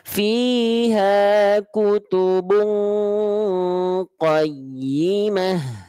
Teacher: fiha kutubung kenapa enggak ada sisa suara yang mengalir di mulut karena dia dengungannya kuat makhroj kaf-kafnya menghalangi suara yang keluar dari mulut sehingga masuknya dengungan ke hidung